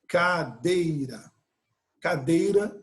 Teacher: cadeira em três sílabas é uma palavra paroxítona